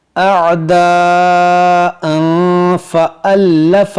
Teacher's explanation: यहाँ पर तनवीन के बाद फ़ा है तो यहाँ पर इख्फ़ा करेंगे